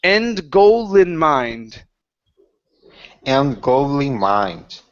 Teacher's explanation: And the L jumps out of nowhere, and I can hear it.